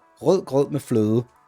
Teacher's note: You can't say that if you're not a Dane, because the D's are all soft. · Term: soft D